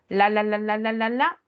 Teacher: No llega a los dientes, sino en la parte superior, lo que está como unas curvitas que está la parte de encima. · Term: alveolares